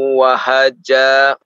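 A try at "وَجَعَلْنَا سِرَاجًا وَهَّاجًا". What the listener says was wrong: Wahhaja, ada tasydid di situ. Wa ja'alna sirajan wahhaja. wahhaja. Hanya 2 harokat.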